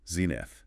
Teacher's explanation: Stress on the first syllable. 2 syllables.